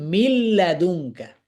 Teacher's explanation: দুইটা হরফের সাথে হচ্ছে গুন্না ছাড়া পরিপূর্ণ ইদগামে কামেল সম্পর্ক